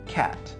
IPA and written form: kæt (cat)